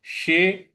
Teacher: शलजम वाले श को जीभ को रोल करके बोलेंगे